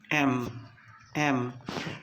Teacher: When you pronounce the sound m, which is voiced, your both lips are actually meeting. Upper and lower lip are meeting.